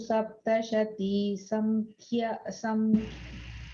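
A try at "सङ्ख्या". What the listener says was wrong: Sorry, there's no in sound there. It is the ing. So the N and G, the ing sound has to go. But it's not a full ing. So anala, you just kind of think it of as sankhya, SANKH. Sankhya.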